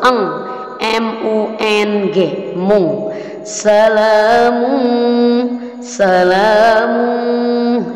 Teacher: Sedangkan qaf, an, maka jauh sekali, maka disebut ikhfa ab'ad. Dan cara mengucapkannya pun jauh dari bunyi nun, jadi menjadi ang, menjadi ng. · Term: ikhfa hakiki